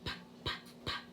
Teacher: is just a puff of air. There's no voice with that sound at all.